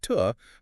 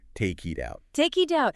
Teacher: Instead of a hard, aspirated T sound like tuh, the tongue just briefly flicks against the roof of the mouth, producing a sound that is actually much closer to a soft D or even a rolled R in Spanish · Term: alveolar tap